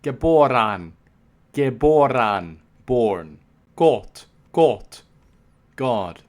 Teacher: he describes the short o as an open o as in German